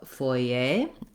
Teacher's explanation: Many Americans and other English speakers also go a little bit closer to the French by stressing on the A syllable and saying more of a foyer, and not saying that sound.